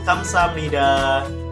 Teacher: Ada biep bertemu nian, biep bertemu nian dibaca miem, masuk nasalization, persengawaan.